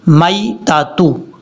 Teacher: یا کو short cut پڑھیں گے کیونکہ یہ یا لین ہے، یا مدہ نہیں ہے، اس کو لمبا نہیں کرنا